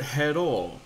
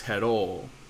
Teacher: even though that there are two of the same vowel next to each other those are still meant to be separate syllables